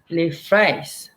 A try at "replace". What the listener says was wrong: Replace. The first time it sounded like an F when you said it. And I remembered on the previous slide, where was the P? Uh, Another example, I forgot, but yeah, replace.